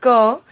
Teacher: जब हम कहते हैं क, तो क के साथ अ की भी आवाज सुनाई देती है।